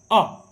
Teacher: तो अ को बोलते समय, छोटा आ को बोलते समय बीच में जीभ का जो है भाग ज़्यादा काम करता है